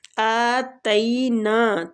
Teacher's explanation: کھڑی زبر ہے تو اس کو ایک حرکات کھینچیں گے، آتینا، تئی کے آگے یا لین ہو رہا ہے